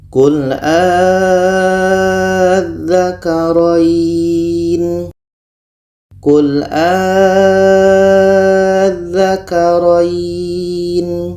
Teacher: Jadi a ini kita panjangkan 6 harkat baru masuk ke tasydidnya, baru masuk ke huruf yang ada tasydid. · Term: mak badalnya, mak badal